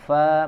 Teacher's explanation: gigi seri atas ya disentuhkan ke bibir bagian dalam ya, bibir bawah. Fa mengeluarkan angin. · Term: huruf fa